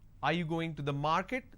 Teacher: this is going up because the last word denotes like it's a question